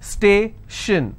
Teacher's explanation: So I will stress on stay.